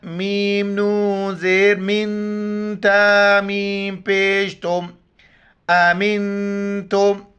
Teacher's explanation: نون ساکن ہے، اخفا مال غنہ کریں گے، ناک میں آواز چھپائیں گے